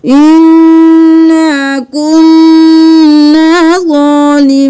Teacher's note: غنہ بھی کرنا ہے اور ایک الف کے برابر کھینچنا بھی ہے